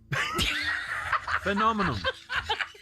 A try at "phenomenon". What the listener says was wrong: an M in. You'd put an M in at the end.